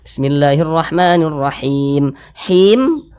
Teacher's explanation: pada ayat pertama itu him itu kita panjangkan itu Mad sukun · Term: Mad Arid lisukun